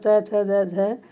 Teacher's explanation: च वर्ग जो होता है च छ ज झ, ये तालव्य वर्ण के अंतर्गत आता है